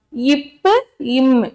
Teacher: ரெண்டு உதடுகளும் என்ன செய்யும் மடிந்து தொடும்